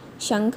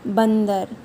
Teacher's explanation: अंग की ध्वनि निकलती है, कहीं ना कहीं आपके नाक का इसमें प्रयोग होता है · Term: अनुस्वार की मात्रा